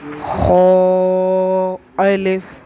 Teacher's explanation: Next آیا ہے حروف مستعلیہ. اسے بھی موٹا پڑھیں گے.